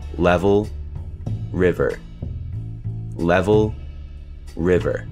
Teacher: the syllabic ul and r sounds in the second syllable of their names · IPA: /l/, /ɫ/; /ɹ̩/, /ɚ/